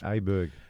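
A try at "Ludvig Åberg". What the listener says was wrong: He's saying Ludwig Aberg, which is You're saying his name incorrectly. The A sounds like the O in Thor. So Ludwig Aberg should be pronounced Ludwig Orberg, I think is what he's saying. Orberg. Ludwig Orberg.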